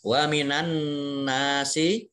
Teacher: nun tasdid itu dibaca mendengung atau gunnah dan ditahan kurang lebih 2 ketukan atau 2 harokat